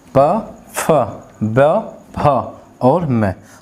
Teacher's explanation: दूसरे और चौथे में अधिक वायु निकलती है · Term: महाप्राण